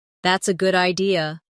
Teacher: Notice how their voice rises at the end.